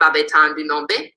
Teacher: So if you wanted to say these 3 uncles, now in this case, the demonstrative is causing that numeral and that noun to become low toned, whereas on their own, they would retain their lexical tone.